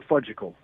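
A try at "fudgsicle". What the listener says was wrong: The fudge-sicle? The fudgicle? You left out a syllable.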